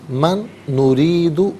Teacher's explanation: من میں نون ساکن سے نریدو کے نون کے ساتھ ملائیں گے، نون کی آواز کو غننے کے ساتھ ہی ادا کیا جائے گا۔